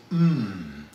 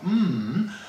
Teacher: the bilabial nasal, which, surprisingly enough, is how we describe the sound mmm, because all the sound is actually coming through your nose